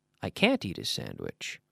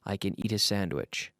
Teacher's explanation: we would emphasize can't but we don't emphasize can